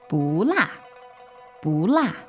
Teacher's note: la is 4th tone, and then the bu here is 2nd tone. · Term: tone change